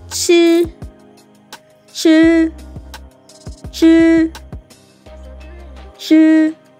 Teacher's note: my voice it's a flat tone and then it's pronounced here it's flat it's not falling and it's not rising it's just there it's just flat